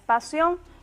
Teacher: la fuerza de pronunciación recae en la última sílaba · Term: aguda